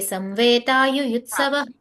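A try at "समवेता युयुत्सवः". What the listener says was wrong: So there, Samveta you are saying, no? Samave, ma is full. So you cannot say Samveta. Samaveta.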